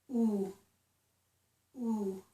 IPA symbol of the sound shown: u